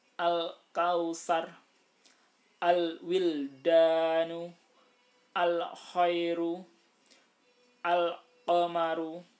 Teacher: dibaca izhar qamariyah yaitu cara membacanya dibaca terang alif lam nya